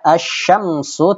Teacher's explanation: Lamnya sama sekali tidak dibaca, ya. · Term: idgham syamsiyah